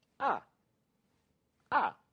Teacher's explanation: the fourth tone that's a falling one